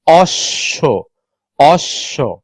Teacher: যুক্ত ব্যঞ্জনের শেষে যে অধ্বনিগুলো আছে প্রত্যেকটা অধ্বনির উচ্চারণ সংবৃত হয়